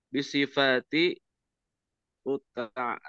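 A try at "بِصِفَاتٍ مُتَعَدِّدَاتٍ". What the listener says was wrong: Tanwinkan aja bisifatin muta'addidatin.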